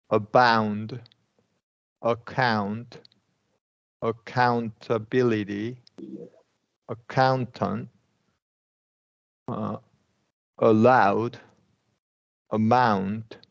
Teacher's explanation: Schwa sound, account, really short